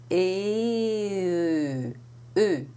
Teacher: The e is a front rounded vowel. The tongue is forward in the mouth, pushed forward. The tip of the tongue is against the lower teeth, and the lips are rounded.